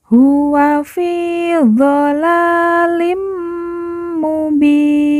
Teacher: Nun di ujung kita matikan atau kita sukunkan karena waakaf atau berhenti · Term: waqaf